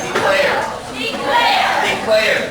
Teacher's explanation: So here for the word declare, the stress is on the second syllable.